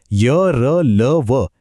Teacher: य र ल व यांचा उच्चार बऱ्यापैकी स्वरांसारखा वाटतो अगदी स्मूथ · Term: अर्धस्वर